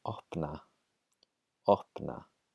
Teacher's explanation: Okay, the next rule about P is before the letters N or L, there's also pre-aspiration, much as we saw with the letter K.